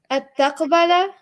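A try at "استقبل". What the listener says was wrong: Where'd the is to go?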